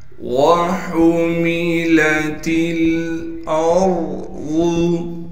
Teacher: لام سے تا کو اس لیے ملائیں گے کہ لام ساکن ہے، پھر اس کے بعد لام کے بعد لکھی ہوئی تو الف ہے، لیکن الف پر زبر آنے کی وجہ سے اب یہ حمزہ بن گئی، لہٰذا حمزہ کو ہم را سے ملائیں گے، اس لیے کہ را ساکن ہے، اور را ساکن سے پہلے حمزہ پر زبر ہے، لہٰذا را کو موٹا کر کے پڑھیں گے، اور ضاد بھی موٹا پڑھا جائے گا، اس لیے کہ ضاد موٹے حروف میں سے ہے۔ · ہا کو گلے سے نکالیں گے، ہا کا گلے کا وہ حصہ جو منہ کی جانب ہے۔